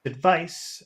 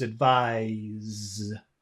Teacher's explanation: it has the vibration Z that makes the vowel sound longer